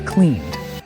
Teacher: The N at the end of clean is also voiced, so it's cleaned.